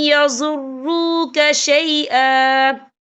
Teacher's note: وقف کی صورت میں 1 زبر پڑھا جائے گا، 2 زبر نہیں پڑھے جائیں گے۔